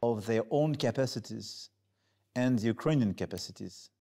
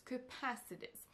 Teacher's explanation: Donc c'est vraiment la deuxième syllabe qui ressort plus.